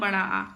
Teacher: विवृत स्वर कौन सा होता है बड़ा आ